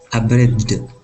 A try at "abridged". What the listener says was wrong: Now let's let that D. Let's make that just a little softer. Now you have good placement with the tongue. Let's make it a little softer. We say abridged.